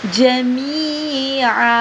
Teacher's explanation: وقف کی صورت میں ایک زبر پڑا جائے گا اور ساتھ میں تھوڑا سا لمبا کریں گے